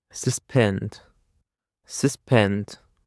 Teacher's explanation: The stress is on the second syllable, suspend. Suspend is a verb and it means to stop something from happening for a short time.